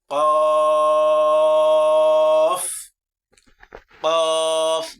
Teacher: জিহ্বার গোড়া তার বরাবর উপরে তালুর সঙ্গে লাগিয়া একটি হরফ উচ্চারিত হয়, কফ, কফ, দুই নক্তাওয়ালা কফ। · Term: চতুর্থ নম্বর মাখরাজ